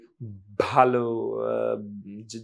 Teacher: বাংলায় যখন করি তখন আমাদের মুখ মিশে যায় মানে ঠোঁট দুটো মিশে যায়